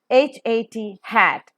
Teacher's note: voiceless because the vocal cords do not vibrate glottal because it is coming out from the glottis region straight away and fricative because the air that is coming out